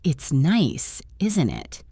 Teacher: my voice goes down at the end, I am not really asking a question. I am just making conversation and expecting you to agree.